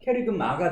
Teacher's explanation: 마가 붙었기 때문에 유성음화가 이루어져서 캐리그마가 된 거다